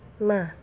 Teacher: Yang nomor 7 itu ada ujung lidah sedikit ke bawah dari lam. Ada di ujung lidah tapi dia sedikit ke bawah lagi tempatnya dari lam, yaitu keluar huruf nun atau na. Kalau tadi la, ini na, sedikit ke bawah lagi.